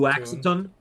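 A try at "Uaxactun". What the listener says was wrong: Oaktun. You don't pronounce the X in this.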